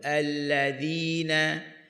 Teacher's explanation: huruf zal hujung lidah di hujung gigi atas keluar sedikit